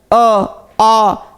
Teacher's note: आप खुद उच्चारण कर लीजिए। अ आ कंठ से हो रहा है ना